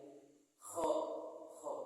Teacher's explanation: Jadi pengucapannya itu enggak di tenggorokan bagian pangkal atau bagian tengah, tapi di bagian tenggorokan bagian atas, seperti itu. Nah, huruf kho itu dalam pengucapannya itu harus terbuka. Jadi si lidahnya itu tidak menyentuh pada langit-langit tenggorokan. Jadi pengucapannya jadi kho, dan juga dalam pengucapan lafaz kho itu harus lepas.